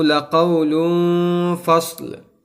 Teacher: اب یہاں پر لام کے اوپر دو پیش آیا ہے، اس کے بعد فا آیا ہے، یعنی تنوین کے بعد فا آیا ہے، تو یہاں پر اخفا کا قاعدہ ہوگا، یعنی ہم کو گنہ کر کے پڑھنا ہے کیونکہ فا حروف اخفا میں سے ہے